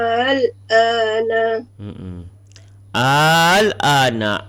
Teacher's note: Al panjang 6, panjang 2.